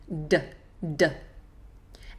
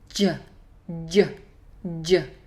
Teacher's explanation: like you're going say duh like dad duh duh and then you push more of the tongue onto the roof of the mouth so more of the tongue touching more at the middle of the tongue rather than the tip of the tongue jo Jo Jo so it's close to addy but there's a